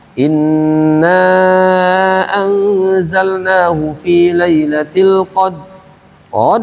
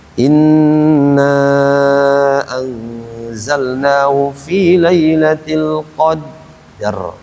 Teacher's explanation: Nah, kadang-kadang kita sering mendengar inna anzalnahu fi lailatil qad qad aja padahal ujungnya apa itu ro ro makanya berhenti di ro inna anzalnahu fi lailatil qadar rnya itu harus kedengaran qadr itu harus kedengaran jangan qad saja